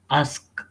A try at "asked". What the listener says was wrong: D. D should sound like T. I can hear anything. I hear only ask. Asked.